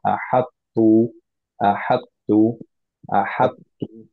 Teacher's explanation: প্রথমটা কিছু ক্যারেক্টারিস্টিক্স সিফাত থেকে গেল, কমপ্লিটলি এটা ড্রপ হতে পারেনি, এটা হেভিনেসটা থেকে গেছে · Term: ইদগাম নাকিস